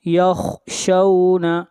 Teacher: خا کو موٹا پڑھیں گے، خا حروف مستعلیہ میں سے ہے